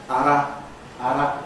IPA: (a)ɾ(a)